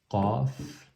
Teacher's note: On serre la gorge au fond. Au fond de la gorge, on serre, on resserre la gorge, et donc ça fait le son Qaf.